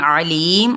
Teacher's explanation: आइन को वस्ते हलक से अदा करेंगे